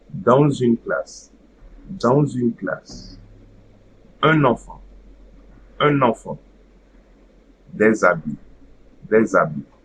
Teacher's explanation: while pronouncing the first and the second word, I will make no pause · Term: liaison